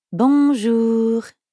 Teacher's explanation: in fact the n isn't really pronounced at all instead practice saying o like the letter o in english but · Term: nasal sounds